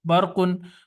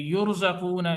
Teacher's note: रा साकिन है लेकिन रा से पहले पे जबर है, तो इस वजह से रा पुर पड़ी जाएगी